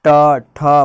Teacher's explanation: आपका जो जीभ है वो थोड़ा टेढ़ा होगा और ऊपर जुबान के ऊपर तालु में सटेगा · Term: मुर्दा